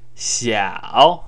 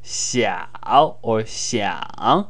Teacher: the third tone is a falling then rising tone. Now, the more emphatic way to say that would be like 小, like this word I have here, 小 or 想.